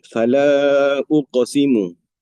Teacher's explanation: Jadi mad jaiz munfasil dibaca empat atau lima harakat.